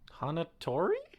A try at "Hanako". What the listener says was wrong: Hanako. You added a syllable.